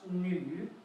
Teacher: the tone goes down and up